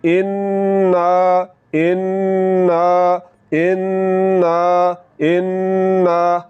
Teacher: अब इस लफ्ज़ की तरफ बढ़े, यहाँ पर हमने इसको पढ़ना है इन्ना, यानी कि नून के बाद अलिफ आ रहा है तो आवाज़ को नाक में ले जाकर फ़ौरन नहीं छोड़ना, बल्कि आवाज़ को नाक में ले जाकर थोड़ा सा लंबा करना है। जब हम आवाज़ को नाक में ले जाकर थोड़ा सा लंबा करेंगे तो याद रखें, इस तरह करने से ये अलिफ की आवाज़ पैदा होगी।